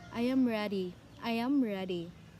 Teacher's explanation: It's like the pitch of your voice is going down. · First is the falling intonation. Falling intonation gives statements or commands.